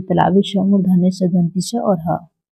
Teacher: संघर्षी व्यंजन, संघर्षी व्यंजन हो गया जिन व्यंजनों का उच्चारण करते समय 2 उच्चारण अवयव इतने पास आ जाते हैं जिसे हवा का मार्ग सकरा हो जाता है और हवा संघर्ष के साथ बाहर निकलती है, उसे संघर्षी व्यंजन कहते हैं।